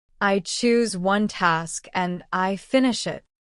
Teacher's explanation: Notice the small pause after each chunk. This helps listeners understand you better and gives you time to breathe.